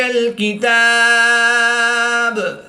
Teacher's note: وقف کی حالت میں قلقلہ صغریٰ کر کے پڑھیں گے